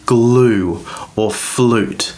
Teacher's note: long vowel sound like in glue or flute the u is always pronounced with an oo sound